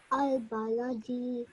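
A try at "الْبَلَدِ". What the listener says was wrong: Just nearly at the end over here. Don't stretch your sound out again too long. It's 1 second, so pronounce it for 1 second. Al baladi. Okay, so last time when you said it incorrectly, you said it al baladi, which is wrong. The correct way is al baladi. 1 second at the end, okay?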